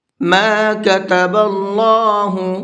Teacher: اللہ کے لام کو منہ بھر کے پڑھیں گے، اس لیے کہ اللہ کے لام سے پہلے زبر ہے